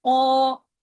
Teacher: کو آپ پڑھیے منہ بھر کے، زبان کو اوپر لے جا کے، جیسے قو ایسے کر کے پڑھیے ، کیونکہ قاف کے ساتھ ہیوی لیٹر ہے، اس کے ساتھ